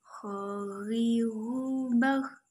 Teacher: Cara melafalkan huruf ho, huruf ini dikeluarkan dari tenggorokan yang terdekat dari rongga mulut kita. Ciri khasnya terdengar seperti suara orang yang sedang mendengkur.